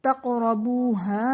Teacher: تقربوها میں قاف حرف قلقلہ ساکن ہے تو یہاں پر قلقلہ خوب ظاہر کریں گے